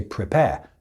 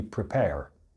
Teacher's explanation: I didn't pronounce the last R, so there's A-R-E on the end of that word, but we don't pronounce that in the UK. We just say prepare. · Now the American accent, any of the American accents, they will always pronounce the R.